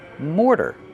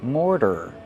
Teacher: More plus the fast D.